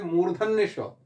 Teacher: मूर्धा से इसका उच्चारण होता है, इसलिए इसको मूर्धन्य श बोलते हैं